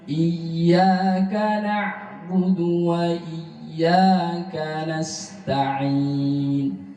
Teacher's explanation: Iyyaka, ya dibaca satu alif karena termasuk mad asli atau mad tabi